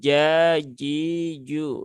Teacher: Jim juga sama Jim dia tidak ada sifat hamsnya